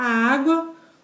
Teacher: o U sendo semivogal e o A vogal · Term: ditongo crescente